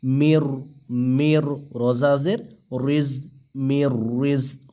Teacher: নুন সাকিনের পরে র আসার কারণে এখানে কোন প্রকার গুন্না করা যাবে না কারণ র হচ্ছে ইদগামে বেলা গুন্নার হরফ ঠিক আছে সেজন্য মির